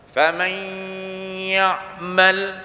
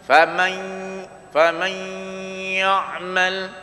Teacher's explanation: Maksudnya nun mati bertemu huruf ya. Famai masuk hidung. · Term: dengung